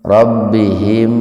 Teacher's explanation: Robbi, Rabbihim idhar syafawi. Mim mati ketemu dengan wawu, jadi mimnya dibaca idhar Pak, dibaca jelas di bibir.